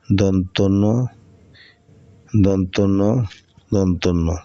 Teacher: এই ন টা দাঁতের থেকে দাঁতের থেকে উচ্চারিত হয় দাঁতে গোড়া থাকে এজন্য এর নাম দন্ত জিহ্বা জিউবার আগা এবং